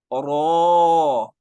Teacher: ایک تو را کو موٹا کرنا ہے، وجہ را پہ زبر آ گئی ہے، لمبا کرنا ہے، کیوں؟ آگے الف مدہ آ گیا ہے۔